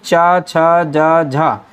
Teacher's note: ये स्पर्श संघर्षी व्यंजन कहलाते हैं